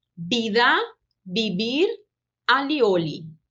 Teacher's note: o som do I, ele não muda, ele se mantém constante, independente da posição que ele ocupa em relação à tonicidade da palavra.